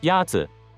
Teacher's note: The first tone is a high, level tone.